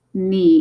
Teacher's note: Remember, don't say the K like they do in German. They would read this as Knie, but this is just knee in English.